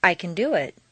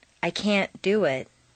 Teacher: reduce the positive can to can and stress the verb make the negative can't sound very short and stress both can't and the verb this will contrast with the Positive emphasized can which is doubled